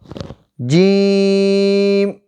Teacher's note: زبان کا درمیان جب اوپر کے تالو سے لگے تو جیم ادا ہوتا ہے